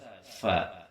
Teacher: berada pada syafatain atau pada bibir dua cuman bibir ini ia yang bersentuhannya adalah bibir bawah dengan gigi seri bagian atas